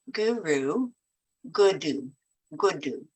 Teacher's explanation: it doesn't have to be a hard D it is a soft D